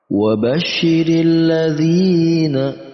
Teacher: ada panjang dua ketukan pada huruf zal yang berharakat kasrah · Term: mad tabi'i